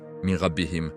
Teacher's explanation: Idgham avec gunna, min rabbihim, le nun se fond dans le ra avec nasal